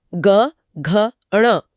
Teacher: अगले तीन अक्षरों ग, घ, ण में गले के अंदर एक झनझनाहट महसूस होगी जो कि सघोष है।